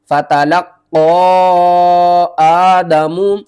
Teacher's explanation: رہی ہے کھڑا زبر بھی ہے اور تشدید بھی ہے تو قاف کے اوپر آپ نے قلقلہ بھی کرنا ہے اور ایک الف کے برابر اوپر کی طرف کھینچ کر بھی پڑھنا ہے